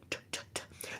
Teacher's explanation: there's no vocal cords engaging behind it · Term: unvoiced plosive